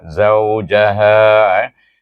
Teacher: Zau itu dibaca dengan Lin sebab wau tu ada tanda mati